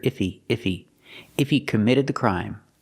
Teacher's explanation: He is not a stressed word, so sometimes you don't hear the H. You hear iffy, iffy.